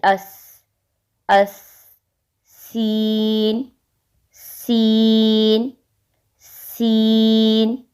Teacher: अब सीन, ऊपर नीचे के दांत मिलाकर जुबान की नोक नीचे वाले दांतों के साथ लगानी है, जैसे अस, अस, सीन, सीन, सीन।